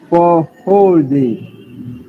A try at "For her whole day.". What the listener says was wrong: But before whole, there is something. But she's barely pronouncing it, but she's pronouncing something. For a whole day. For a whole day. And when you say it fast, it's like this. For a whole day. For a whole day.